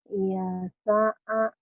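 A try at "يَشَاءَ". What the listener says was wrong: yasha'a shin, nggak keluar tuh shinnya. Yasha'a shin. Yasha'a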